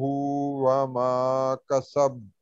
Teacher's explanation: تو ہم یہاں رکیں گے تو با کی زبر نہیں پڑھیں گے، تو ہم پڑھیں گے وما کسب. با کا کلکلا کریں گے کبرا والا